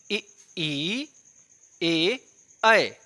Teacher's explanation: ठीक है, तो जीभ के अग्रभाग से आप बोल के देखेंगे इ ई ए ऐ, इ ई ए ऐ में आप देख रहे हैं जीभ का आगे वाला जो भाग वो सक्रिय है, उस पर हवाओं का थोड़ा सा दबाव पड़ रहा है। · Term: अग्रस्वर